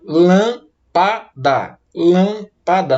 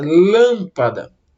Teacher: quando você separa a palavra lâmpada, o acento tônico, a sílaba tônica da palavra, ela é a antepenúltima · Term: proparoxítonas